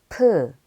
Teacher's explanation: 프, The letter piup is made by making the top and bottom lines of mium extend to the side. P is a stop plosive with a stronger aspirated sound than b.